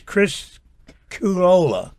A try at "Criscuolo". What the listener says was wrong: There is a U, but it doesn't mean you have to use it. It's silent.